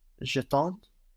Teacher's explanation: No, because when we remove the RE ending, we have no E on the end, making us hear the consonants before. The D and the S just become one consonant cluster that is silent.